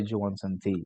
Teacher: So D and Y becomes J. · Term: reduced sounds